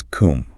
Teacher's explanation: The O in the first syllable loses its shape entirely. It becomes a schwa. It's not com, it is cum.